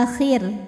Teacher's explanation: hakikatnya adalah Hamzah maka dibaca panjang a-nya dua harakat [Musik] alakhir jika kita berhenti di huruf ro maka rnya ini dibunyikan secara tarqik sebab huruf rnya disukunkan dan huruf sebelumnya berbaris kasrah